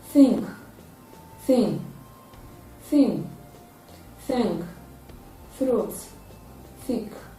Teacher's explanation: Therefore, it is a dental sound. It is a voiceless dental fricative sound.